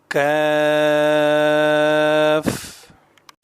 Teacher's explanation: زبان کی جڑ اور اوپر کے قدرے سخت تالو سے ادا ہوتا